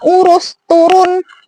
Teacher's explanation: Nah, lanjut ke U, ada juga U yang posisi mulutnya itu, posisi lidahnya itu tinggi bawah, ya, terus bagian lidahnya itu belakang, dan posisi mulutnya semi tertutup.